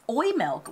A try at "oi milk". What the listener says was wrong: Yeah, but it's more like ran together. when I hear this pronounced, it's sort of like oimilk. You know, almost like the E isn't as hard as when we say like milk.